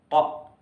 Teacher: keluarnya huruf pada bagian langit-langit mulut yang menonjol ke bawah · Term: uvular